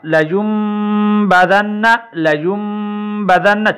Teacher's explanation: پر غنہ ہوگا، لیمبذن، لیمبذن، چھوٹی سی میم لکھی ہوئی ہے، یا کے بعد جو آواز واضح ہوتی ہے وہ میم کی ہوتی ہے، یہاں پہ نون اور با اس کی آواز اندر جو ہے ضم ہو جاتی ہے